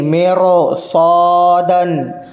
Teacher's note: رائے ساکنہ کے بعد چونکہ صاد ہے حروف مستعلیہ میں سے ہے، اس لیے یہاں پر رائے ساکنہ کو پر کریں گے، مرصادن۔ میم را زیر مر، صاد الف زبر صا، مرصا، دال دو زبر دن، مرصادن، مرصادن۔